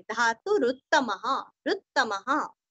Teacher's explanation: धातु का तू रस्व और यहाँ पे रू भी रस्व है और दो त का उच्चारण भी अच्छे से करना है